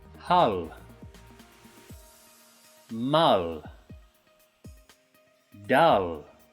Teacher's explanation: your mouth at the end is wide open and the tongue is touching the top of your mouth